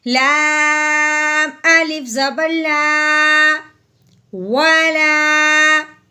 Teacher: اب ہم نے لام سے پہلے، لام کو پڑھنے سے پہلے آگے دیکھا ہے تو وہ ہے الف، تو الف سے پہلے کیا آ گئی، زبر، تو اب ہم نے کیا کرنا ہے، لام کو لمبا کرنا ہے الف سے پہلے زبر آنے کی وجہ سے، تو کیسے پڑھیں گے، لام الف زبر لا، والا، ٹھیک ہے، والا۔